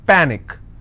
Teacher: Panic is pa-nick, which means I will stress on pa and it's pronounced as panic.